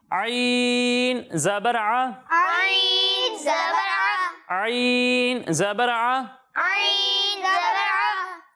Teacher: جب ہم عین کی ادائیگی کریں گے تو اسے حلق کے بیچ والے حصے سے پڑھیں گے. بیچ والے حصے سے پڑھیں گے, درمیان والے حصے سے پڑھیں گے.